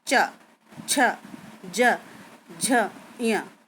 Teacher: ऐसे ही चा वर्ग, चा में हमारी जीभ तालू से टच होती है हल्का सा और उससे वायु टकरा कर निकलती है, तो चा वर्ग के व्यंजन बोलते हैं। · इसमें जीभ जो है तालू से पूरी तरह से तो टच नहीं होती, लेकिन उस तालू और जीभ से मिलकर ये चा वर्ग के व्यंजन बोलते हैं।